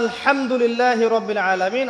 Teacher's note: এই হা এর মাখরাজ কোথায়? হা এর মাখরাজ কোথায় বলেন একজন? কণ্ঠনালীর মাঝখান থেকে।